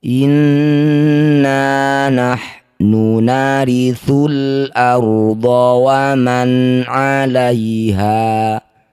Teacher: Inna, setiap ada nun atau mim yang bertasydid disebut bacaan gunnah musyaddadah. Cara bacanya bunyi nun ini kita dengungkan 2 harokat.